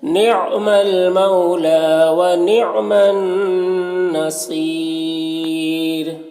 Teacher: وقفی کی صورت میں مد عارض وقفی ہوگا، اور را کو باریک پڑھیں گے